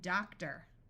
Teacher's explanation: sometimes especially at the end of a word our mouth gets a little lazy and it sounds more like er